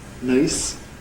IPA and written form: nɜɪs (nurse)